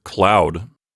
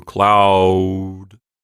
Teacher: we start with ah, some kind of nondescript A-class vowel, and then end up with ooh, cloud. Kind of a rounded vowel at the end.